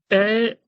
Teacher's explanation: ए का उच्चारण स्थान कंठ तालव्य है।